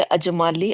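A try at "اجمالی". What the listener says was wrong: Word अजमाली होता है या इजमाली होता है? आई थिंक इजमाली होता है ना।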